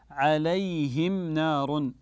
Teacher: ميم ساكنه اتى بعدها حرف النون فالحكم هنا احسنتم كذلك الاظهار